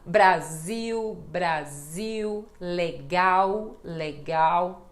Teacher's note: Lembrando que isto é uma pronúncia do Brasil em Portugal não eles não fazem este som de u com a letra L